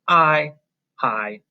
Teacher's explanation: we hear the long i sound because it's not closed off by another consonant sound